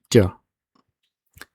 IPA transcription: ɟ